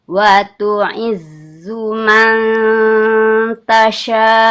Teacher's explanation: Huruf zai sifatnya jah, ya kan tertahan hembusan anginnya enggak boleh keluar